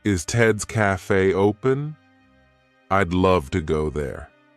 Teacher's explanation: the word would becomes ey